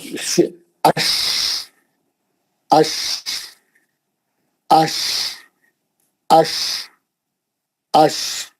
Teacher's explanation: اس کی پورا اش، اش، اش، اش، اش. یہ زبان کا درمیانی حصہ جا کے ہارڈ ٹاپ کو ماریں گا، شین نکلے گا. اور شین کا آواز جب آپ پڑھیں گے، شین کا آواز پورے کمرے میں پھیل جانا.